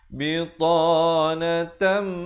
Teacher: Dengungkan di sini, tanwin bertemu mim, idgham bi gunnah, kada dengung 2 harakat.